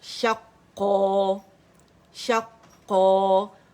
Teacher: الف مدہ میں بدل جائے گی تنوین ہماری, اور 2 کاؤنٹ کے لیے آواز اوپر جائیں گی. شقا شقا. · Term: مد عوض